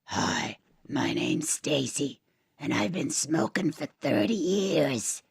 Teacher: I'm pulling my larynx down it's really low I'm like pulling pulling the but the root of my tongue